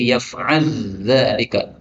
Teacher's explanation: lam ketemu zal bisa dibaca idgham menjadi yaf'al dzalika, lamnya hilang